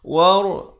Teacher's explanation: War, ra ni sini dibaca tebal.